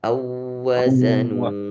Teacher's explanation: ditahan wau musyaddadah ketemu dengan wau lagi. Awa nah tahan satu harakat.